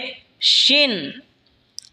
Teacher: শিন জিহ্বার মধ্যখান তার বরাবর ওপরে তালের সঙ্গে লাগা উচ্চারণ হবে শিন